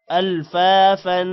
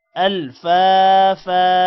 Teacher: اگر وقف آئے گا تو فا کے بعد الف ایک زبر کے ساتھ پڑھا جائے گا